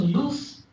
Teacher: at the end if you have voiceless sound then the length is less